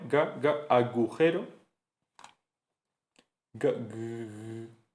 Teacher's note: El sonido oclusivo velar sonoro de agujero